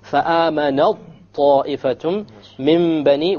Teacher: So we did idgham. We dropped the ta. You don't hear the ta sound.